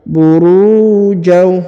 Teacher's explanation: Huruf ru dipanjangkan 2 harokat karena di depannya terdapat waw sukun atau waw mati